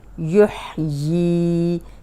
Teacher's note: یہ کو لمبا کر رہے ہیں اس لیے کہ کھڑی زیر ہے اور ح کی آواز کلیئر آئے